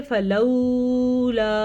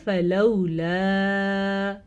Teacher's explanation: اس کو نرمی سے پڑھا جاتا ہے، اس کا مطلب یہ ہے نرمی سے پڑھنا، لین نرمی سے پڑھنا، اور اس کو لمبا نہیں کیا جاتا۔ یعنی کہ اگر کوئی پڑھے فلولا تو اس نے بالکل بڑی غلطی کر دی، یہ ہے فلولا، اس طریقے سے پڑھا جائے گا، ٹھیک ہے۔